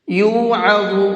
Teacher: عین کو حلق سے نکال کر کے پڑھیں گے اور ضا کو منہ بھر کے پڑھیں گے